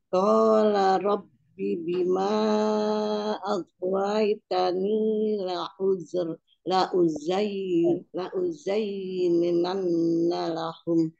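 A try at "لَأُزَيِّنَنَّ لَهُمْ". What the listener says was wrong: Bukan ninan, la uzayyinanna lahum. La u. Coba hamzahnya dikonsistenkan ya. Tadi beberapa kali terdengarnya la'u. Nah, bukannya ain tapi hamzah. La'uzayyinanna lahum.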